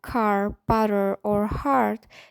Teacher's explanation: American English loves to roll that R. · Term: R sound